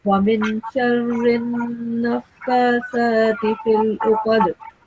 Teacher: we have to prolong this noon sound for 2 seconds and produce a nasal sound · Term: noon mushaddad